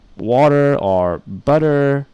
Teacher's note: they don't pronounce the T they they do something called an alveolar tap